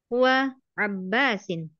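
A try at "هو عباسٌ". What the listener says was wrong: Abbasun, kenapa dikasrah? Kenapa dikasrah? Abbasun, tanwin, un, marfu.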